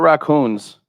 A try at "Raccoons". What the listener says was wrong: Drop the N. Raccoons.